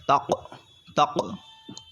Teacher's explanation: یہاں پر قلقلہ خوب ظاہر ہوگا کیونکہ حروف قلقلہ میں سے قاف جو ہے یہاں پر ساکن ہے ، اور جب حروف قلقلہ ساکن ہوتے ہیں تو قلقلہ خوب